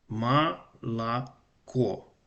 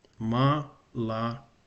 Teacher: The two O sound like ah. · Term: vowel reduction